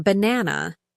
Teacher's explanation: in banana, the stress is on the second syllable.